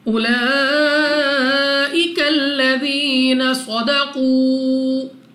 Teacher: لام پر کھڑا زبر 2 سیکنڈ تک نہیں، اس مد کی وجہ سے ہم نے اس کو 3، 4 یا 5 سیکنڈ تک کھینچ کر پڑھنا ہوگا۔